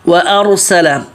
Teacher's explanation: واو پتلا، حمزہ پتلا، یہ دونوں پتلے، آگے را موٹا